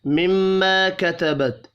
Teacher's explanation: تا ساکن پر قلقلہ نہیں کرنا